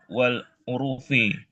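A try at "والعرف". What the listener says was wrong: Wal urfi. Roknya sukun. Roknya roknya sukun.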